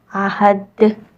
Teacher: ہا کی ساؤنڈ وسط الحلق سے، ہا کی آواز آپ نے گلے کے درمیانے حصے سے نکالنی ہے، اور دال کے بعد وقف کی علامت ہے تو یہاں ہم سٹاپ کریں گے تو یہاں ہم دال میں قلقلہ کر کے ادا کریں گے۔